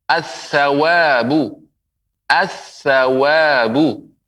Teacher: Dilebur alif lam melebur ke huruf tha. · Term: huruf syamsiyah